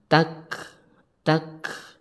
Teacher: Jadi huruf kafnya harus berhembus karena termasuk huruf hames. Hames artinya berhembusnya suara ketika diucapkan.